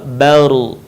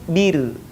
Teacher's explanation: sebelum huruf ra yang mati berharokat fathah dhammah, maka suaranya terdengar menebal, baru. Tapi kalau sebelumnya kasrah, maka terdengar tipis, bir.